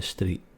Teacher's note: like I took a walk down the street. No T at the end.